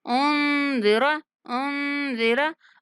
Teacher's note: नून पर इख्फा करेंगे और रा को नहीं खींचेंगे। उन्ज़िरा ऐसे नहीं पढ़ना।